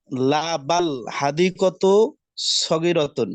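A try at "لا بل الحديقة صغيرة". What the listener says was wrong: লা বাল না, হালিল যেমন হয়েছিল এটা এমন বালিল হবে, লা বালিল হাদিকাতু, লা বালিল হাদিকাতু।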